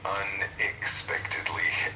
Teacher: the emphasis is on the spec part